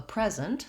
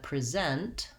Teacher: um if i have a present someone gives me a gift first syllable stress that's the noun versus i'm gonna present some information second syllable stress that's the verb